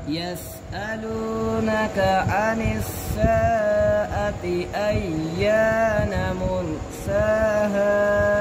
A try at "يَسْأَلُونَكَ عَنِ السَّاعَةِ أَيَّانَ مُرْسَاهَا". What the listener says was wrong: आपने साआती को ज़्यादा लंबा किया है